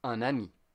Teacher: And if you have N in a nasal sound, you pronounce the N. For example, un, we say ami, but we say un ami. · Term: liaison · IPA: /œ̃n‿ami/